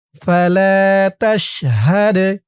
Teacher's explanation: দাল কলকলার হরফ ধাক্কা দিয়ে পড়তে হবে